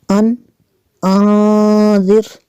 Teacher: نون ساکن کے بعد ذال حروف اخفا میں سے یہاں پہ اخفا کریں گے، اس لیے یہاں پہ غنہ ہوگا